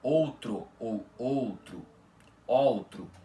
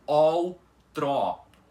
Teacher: Então invés de você pronunciar outro ou outro outro você vai ter que pronunciar como ol trót com os dois ós da palavra abertos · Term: ó aberto